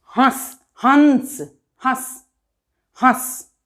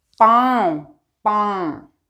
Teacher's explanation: कंठ से और नाक से दोनों जगह से निकलती है। यहाँ आपको फील होगा कि आपके यहाँ तालू के यहाँ बगल से और यहाँ नाक से, दोनों जगह से निकलती है। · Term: अनुनासिक